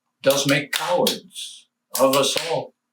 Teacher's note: Most scholars agree that normal speech must take priority, and it would never stress does and of here, nor give them the prominence of a beat.